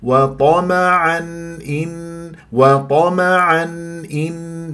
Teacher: يعني تنوين بعدها همزه اظهار